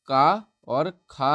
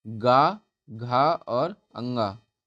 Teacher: पहला और दूसरा अर्थात का और खा हमारे अघोष व्यंजन हो जाएंगे। बचे हुए तीनों गा, घा और अंगा ये हमारे सघोष हो जाएंगे।